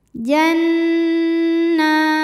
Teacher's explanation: nah hukum tajwidnya Mad thi'i muqaddar sebab Nun berharakat fathah panjang cara bacanya Nun dipanjangkan dua harakat · jelas lahum Jan nunnya dihukumi dengan gunah musyaddadah sebab Nun bertasdid cara bacanya berdengung bunyi dengungan nya tahan kurang lebih dua harakat Janna nah hukum tajwidnya Mad thi'i muqaddar sebab Nun berharakat fathah · Cara bacanya berdengung, bunyi dengungannya tahan kurang lebih 2 harokat. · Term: gunnah musyaddadah